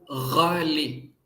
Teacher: It's a nasal, it's a guttural G sound from the back of the throat